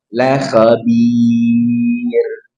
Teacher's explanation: Ra-nya tipiskan la khabir karena sebelumnya ya sukun, sebelumnya kasrah.